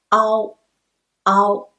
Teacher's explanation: we start from a and slide to o but a is stressed